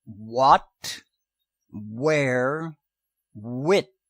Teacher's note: If you add the sound of voice to the pressured breath of WH, the sound is called W.